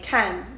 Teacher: for the fourth tone that is the falling tone